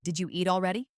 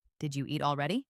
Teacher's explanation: Did you becomes did ya.